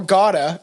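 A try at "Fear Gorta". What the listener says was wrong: There's a fucking R. Yes, you said gotta.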